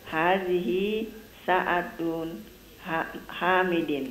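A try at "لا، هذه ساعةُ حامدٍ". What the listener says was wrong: Ya, yang tunnya, yang ya. Tu-nya itu enggak pakai tanwin. Hadhihi sa'atu Hamidin.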